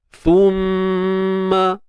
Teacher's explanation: Mim bersabdu pula kita kena dengungkan. Wajibul gunnah. Wajib kita dengung. Kadar 2 harakat lah.